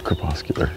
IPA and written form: krəˈpəskyələr (Crepuscular)